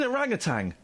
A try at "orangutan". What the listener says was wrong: No, it's not got a G on the end. Orangutan.